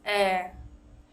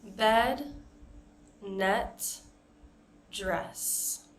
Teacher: the short E sound is eh. It's not as closed as the Spanish E sound